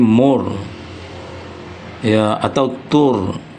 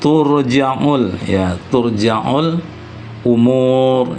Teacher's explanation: Maka bunyi ro sukun itu ditebalkan atau ditafhimkan.